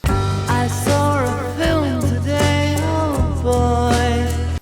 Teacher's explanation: in accents where they don't pronounce their R's at the end of words, like British English, they end up sticking R's in places they don't belong